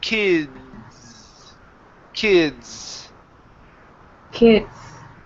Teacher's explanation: that D sound okay the D and the S together okay you need to create a vibration in your throat because the D is a voiced sound